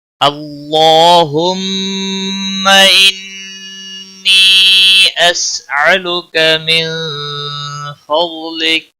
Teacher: اللہ اس میں جلالہ کلام جہاں پر بھی آئے گا پچھلے حرف کے اوپر جب زبر یا پیش ہو تو موٹا پڑھیں گے، یہاں پر بھی اللہ کا لام موٹا پڑا جائے گا، اس کے اوپر کھڑی زبر ہے